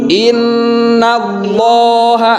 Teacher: Maka cara pembacaannya itu harus digunakan. Jadi harus ditahan sebentar dan suara nunnya itu masuk ke rongga hidung. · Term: nun syiddah